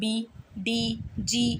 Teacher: मेरे vocal cords vibrate कर रहे हैं तो वो वॉइस्ड द साउंड है। बट जब मैं बोल रही हूं मैं और मेरे वोकल कॉर्ड्स इतने वाइब्रेट नहीं कर रहे हैं तो वो होती है वॉइसलेस। · एक एकदम से बजिंग साउंड प्रोड्यूस होगी आपके वोकल कॉर्ड्स में। आप टच करके देख सकते हो। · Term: वॉइस्ड साउंड